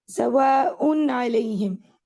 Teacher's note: میں نے ان یعنی نون ساکن، تنوین کا جو نون ساکن ہے اس کو واضح کر کے پڑھا ہے، سواء علیہم، یہ اظہار حلقی ہے.